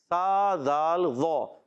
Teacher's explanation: اور ذیوں، ذال کا مخرج بتا دیتا ہوں، ذال کا مخرج زبان کا سرا اوپر کے دانتوں کے اندرونی کنارے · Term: حروف لثویہ